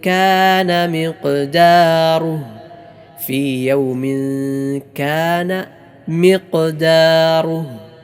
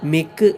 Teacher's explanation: ഖാഫ് നാവിൻ്റെ മുരടും അതിനോട് നേരിടുന്ന മേലെ അണ്ണാക്കും. ഇതാണ് ഖാഫ് പുറപ്പെടുന്ന സ്ഥലം, ഖാഫിൻ്റെ മഖ്റജ്.